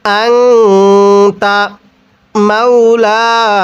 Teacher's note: এই লামের মধ্যেও টান দিতে হবে, নুনের মধ্যেও টান দিতে হবে